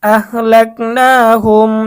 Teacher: এখানে মিম সাকিনের পরে লাম আসছে, সুতরাং মিম সাকিনের ইজহার গুন্না ছাড়া স্পষ্ট পড়তে হবে